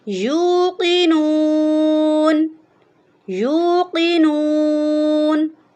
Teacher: یا کے اوپر پیش ہے تو یہ واؤ مدہ ہے، تو واؤ مدہ کو ہم 1 الف کی مقدار کے برابر لمبا کریں گے، جھٹکا نہیں دیں گے